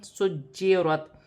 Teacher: جیم مشدد ہے، جماؤ کے ساتھ پڑھا جائے گا